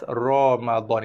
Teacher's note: ra yang pertamanya dibaca tebal ketika berbaris fathah, berbaris atas